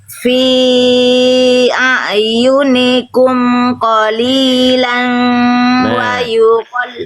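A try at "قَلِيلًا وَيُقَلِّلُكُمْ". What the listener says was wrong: Ini bukan ikhfa. Bukan qalilan fa. Qalilan wa. Harusnya di sini. Nah, dilebur. Dilebur magenta itu, yang warna magenta ini idgham bi gunnah. Ya, dileburkan ke huruf wawu, bukan disamarkan. Nama hukum tajwidnya idgham bi gunnah. Fathatain ketemu huruf wawu.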